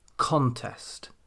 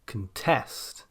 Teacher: Nouns then tend to place their stress on the first syllable, contest, whereas verbs tend to place their stress on the second syllable, contest.